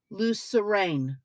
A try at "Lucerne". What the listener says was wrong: Or Lucerne, Lucerne. Well, you just added more vowels, so